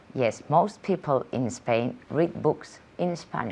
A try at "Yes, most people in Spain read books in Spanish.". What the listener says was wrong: In Spanish, very good.